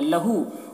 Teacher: الٹا پیش ہے، واو مدہ کی طرح ہوتا ہے یہ، اسے بھی ایک الف کے برابر کھینچیں گے